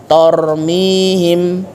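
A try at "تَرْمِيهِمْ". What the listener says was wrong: kadangan huruf yang tipis terbawa menjadi tebal karena di depannya huruf tebal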